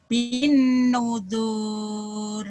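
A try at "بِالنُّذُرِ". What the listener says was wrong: Kenapa panjang? Kan saya sudah bilang. Yang panjang itu kalau ada mad ketemu satu. Ini kan nggak ada madnya, Bu. Bin nudur.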